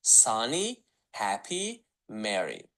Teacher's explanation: İngilis dilində qoşa samitləri bir samit kimi səsləndiririk.